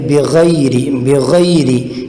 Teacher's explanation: را کو باریک پڑھیں گے اس لیے کہ اس کے نیچے زیر ہے